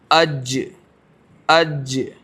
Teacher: جیم کا مخرج دیکھنا ہے، جیم کو لگائیں شروع میں حمزہ جیم زبر اج، دیکھیں بیچ زبان تالو سے لگے گی